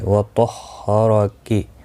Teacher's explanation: طا مستعلیہ ہے، پر پڑھا جائے گا. را زبر کی وجہ سے پر پڑھا جائے گا.